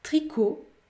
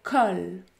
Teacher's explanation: Les voyelles orales peuvent être fermées comme dans tricot, peuvent être semi-ouvertes comme dans colline ou alors ouvertes comme dans col.